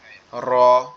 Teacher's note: জিহ্বার আগার উল্টা পিঠ উপরের তালুর সঙ্গে লাগায়া